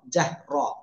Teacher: রর উপরে জবর তাও মোটা আওয়াজে পড়তে হবে।